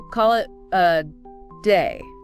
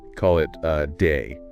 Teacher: Instead of a strong i sound, like in say you want a weak sound, the schwah. So, it's more like a.